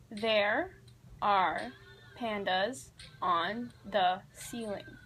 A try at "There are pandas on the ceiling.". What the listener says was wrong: You barely open your mouth.